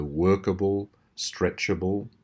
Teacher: this able ending almost always contains the two schwas.